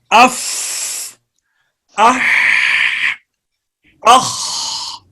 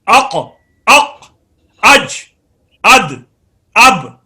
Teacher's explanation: ہمس کے جب آواز بند ہوتی ہے تو اس کے بعد پتہ چلتا ہے یہ حرف ہمس ہے۔ دیکھیے، اف آواز بند ہے اور ایک سانس جاری ہے